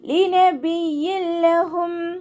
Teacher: തെൻവീനിലുള്ള നൂനിൻ്റെ സൗണ്ടിനെ നമ്മൾ ലാമിലേക്ക് ലയിപ്പിച്ച് ഒന്ന കൊടുക്കാതെ ഓതുക.